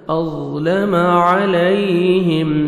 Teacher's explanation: میم ساکن کا اظہار، جلدی پڑھیں گے